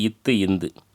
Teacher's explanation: மேல்வாய் பழினது அடியை நாக்கின் நுனி பொருந்துவதனால் தோன்றும் எழுத்துக்கள்